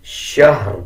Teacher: اس میں آپ نے یہ خیال رکھنا ہے کہ شین کے بعد جو ہا ہے اس کو شین کے ساتھ ملا کے پڑھنا ہے. ہا کے اوپر زبر کی آواز نہیں نکالنی. اکثر لوگ اس کو شہر پڑھ دیتے ہیں.